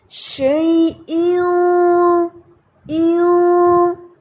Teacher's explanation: جیسے ہی آپ نے ناک میں آواز کو چھپانا ہوتا ہے تو آپ پیچھے سے زبان کو اٹھا لیتے ہیں اور آواز موٹی ہو جاتی ہے. شیئوں ایوں، اور آپ نے پڑھا ہے شیئوں، یہ باریک ہے، یہ رانگ ہے. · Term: ہیوی اخفا